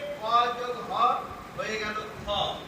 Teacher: কোনো বর্ণকে যখন আমরা মহাপ্রাণ করব তখন তার সাথে যোগ হয় হ, কয়ের সাথে যোগ করলে ক যোগ হ হয়ে গেল খ, কয়ের সাথে যখন হ যোগ করব ক যোগ হ তখন হয়ে গেল খ।